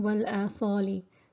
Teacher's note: So the Hamza comes before the Alif. So this Mad is held for 2 harakat and is classed as Mad Badal.